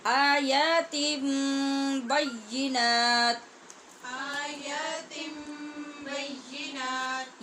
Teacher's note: ہونٹ بند کر کے مخرج میں شدت پیدا کریں گے اور پھر آگے ادا ہوگا با · جب نون تنوین کے بعد با ہے تو ہم نے یہاں نون کی آواز نہیں نکالنی، ہونٹ بند کرنے اور سختی سے ادا کرنا ہے. اور بینات پہ ہم نے آسانی کی وجہ سے وقف کیا.